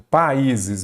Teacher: vogal, vogal em sílabas diferentes, também tem um hiato